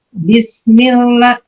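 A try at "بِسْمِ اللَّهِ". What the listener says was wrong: Nah masih. coba ya jadi ternyata memang kita orang Indonesia ini biasa membaca lam dengan membaca huruf L itu dengan tebal. Jadi di ujung hampir kena ke bagian atas gigi tuh, gigi atas kita kan ada bagian atasnya tuh.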